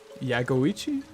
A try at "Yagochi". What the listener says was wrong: Yagochi. Yagochi. It's not Ichi because there's no I before the chi. Got like yo. Yagochi. Yagochi. Yagochi. Yagochi.